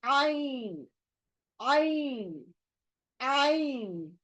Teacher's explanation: हलक के अंदर से, बीच से, हलक के बीच से जहां पर ये लेटर है, हा लेटर है, वहां पर वहीं से निकलेगा आइन। यानी हलक के बीच में दो लेटर बैठे हैं, तीसरा नहीं है।